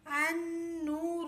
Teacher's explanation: اب لاسٹ حروف ہے نمبر 14 نون النور حمزہ نون زبر نون واو پیش نو النو را پیش رو النور. لام نہیں پڑھا جائے گا الف کو نون سے ملائیں گے